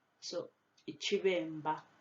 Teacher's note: in the word iciBemba, the first B is pronounced V. The second one is a harder B sound, so it's mb.